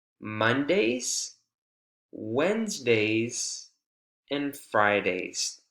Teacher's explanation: it has a rise but a slight fall at the very end to kind of signal that this is the second to last one · When we get to the second to last option, there is a slight fall. It's very slight.